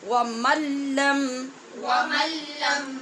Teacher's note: نون ساکن کے بعد لام ہے اور لام اور را دونوں میں بے غنہ ادغام ہوتا ہے، اس لیے ہم نے ایسے پڑھا جیسے میم کو لام کے ساتھ ملا رہے ہیں.